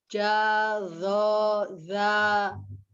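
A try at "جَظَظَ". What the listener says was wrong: Ya, zo-nya kurang terbuka ya. Dari za ke dho, kalau mulutnya tidak berubah. Sama lisan. Za, dho. Jadi kita ini membicarakan kalau masalah hurufnya kan hurufnya al-lisan dari lidah. Jadi perpindahannya dari lisan saja, dari lidah saja. Berarti bibirnya sama, bentuknya mulutnya sama ya, harokat fathah. Zo-nya tidak menurun, tidak zo, tapi zo.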